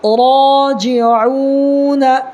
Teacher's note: را کو تھوڑا پر کرنا ہے اس لیے کہ را کے اوپر زبر ہے